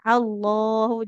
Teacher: ketentuannya memang lafaz Allah itu panjang lamnya